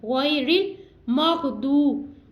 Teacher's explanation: واو ساکن سے پہلے حرف پر پیش ہے تو واو مدہ ہم اس کو کھینچ کے ادا کریں گے